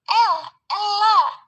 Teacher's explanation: Cara artikulasinya aproksiman lateral. Lalu tempat artikulasinya di alveolar. Tapi cara pengucapan aproksiman lateral itu di mana aliran udara berlanjut di sepanjang sisi lidah tetapi terhalang oleh lidah untuk melewati tengah mulut.